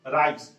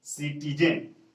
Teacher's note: तो सी के बाद ई होगा तो उसका उच्चारण दंते स। फिर उसी के बाद यदि सी के बाद आई होगा उसका भी उच्चारण होगा दंते स।